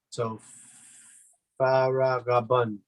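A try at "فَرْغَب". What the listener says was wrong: But just make sure the ra has sukoon, so we don't give it any vowel. We don't say fara, but we say far. We stop on the ra. We stop there. Far, gab. Far, Rab.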